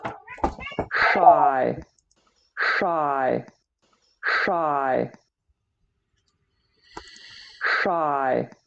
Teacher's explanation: So what I'm hearing is a retroflex sh. If we start from a s, a plain s that we have in say or sigh, pull the tongue tip back sh until it's doing this kind of a shape.